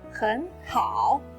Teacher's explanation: hěn is originally a third tone, followed by hǎo which is also a third tone so hěn changes into a second tone · When two third tones are put together, the first third tone changes into a second tone. Remember, it changes into a second tone, not just actually pronounced as a second tone.